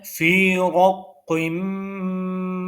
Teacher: फी थोड़ा सा या को हमने खींचा क्योंकि या मद्दा है